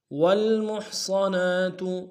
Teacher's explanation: ہا کو گہرائی سے ادا کریں گے